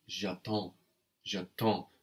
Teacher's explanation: No, because when we remove the RE ending, we have no E on the end, making us hear the consonants before. The D and the S just become one consonant cluster that is silent, so we're left with j'attends, j'attends.